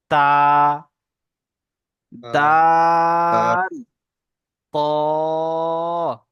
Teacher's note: জিভের আগা এবং উপরের সামনের দাঁতের গোড়ার সাথে লেগে উচ্চারণ হয়